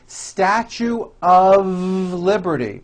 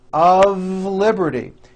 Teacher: notice how I connected the word of with the word liberty.